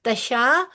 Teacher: शीन के ऊपर खड़ी जबर है, लिहाजा दो हरकत लंबा होगा।